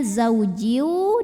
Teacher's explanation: bhunah karena ada tanwin kasrh yang bertemu dengan huruf wau maka tanwin kasrahnya masuk atau lebur ke wau disertai dengung jadi bunyinya zaujiu dan tahan bunyinya zauji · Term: idgham bhunah